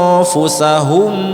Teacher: nun mati bertemu fa di mana pertemuan antara gigi atas dengan bibir bawah